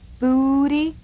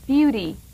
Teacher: putting a little Y in front of the U, making it a U.